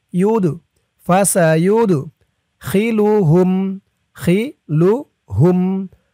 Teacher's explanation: فأما الذين آمنوا بالله واعتصموا به فسيود ইয়া দিয়ে দাল ধরবে এই দালটি কলকলার হরফ ধাক্কা দিয়ে পড়তে হবে